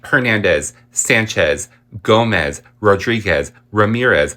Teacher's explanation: Hernandez, Sanchez, Gomez, Rodriguez, Ramirez in the standard English pronunciation have the accent on the penultimate syllable